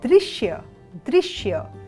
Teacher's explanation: यहां पर द में री का स्वर है